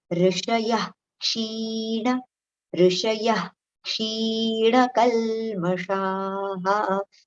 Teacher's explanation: When the following letter is ksha after the visarga, right? So that visarga sound should be recited as aha. Okay, a little ha sound over there.